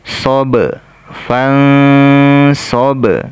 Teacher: ba sukun di sini sifatnya qalqalah, kita pantulkan.